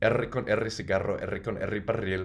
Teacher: This one uses the double R sound a lot, so you gotta roll them.